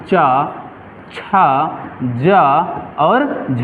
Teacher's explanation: क्यों इसे स्पर्श संघर्षी कहते हैं? क्योंकि इसका जब उच्चारण करते हैं तो जिह्वा में घर्षण होता है। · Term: स्पर्श संघर्षी व्यंजन